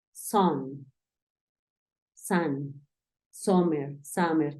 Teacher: es como si quisiéramos empezar a decir una A y terminamos diciendo una O